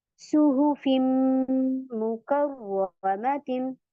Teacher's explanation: तो ये यहाँ पर आप इदगाम करेंगी, यानी इसको मर्ज कर देंगी, मिला देंगी इसमें आप। सुहुफिम, मिलाते हुए गुन्ना करेंगी। टाइमिंग देगी 2 हरकत।